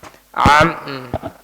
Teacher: ketika mengucapkan huruf mimnya maka gunahnya sangat-sangat sempurna sehingga kalau kita tutup maka tidak keluar suaranya